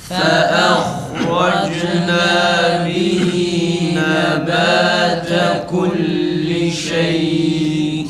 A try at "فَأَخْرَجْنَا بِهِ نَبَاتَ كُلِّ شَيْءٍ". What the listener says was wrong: Ha olmuyor arkadaşlar. Ha'nın mahrecini okurken ağzımız açık olacak. Şu şekilde. Fakat siz ağzınızı neredeyse kapatıyorsunuz yani hemen o harekeye geçiyoruz mahreci okurken o esnada mahreç okunduğu sırada geçiyorsunuz. Bundan dolayı ha güzel çıkmıyor. Öyle okuyorsunuz. Olmaz çene açık olacak, ağız açık olacak. Şu kadar bak. Tam bu şekilde ağız açık olacak.